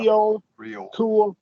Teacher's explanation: our long vowel before L, we're going to add that little schwa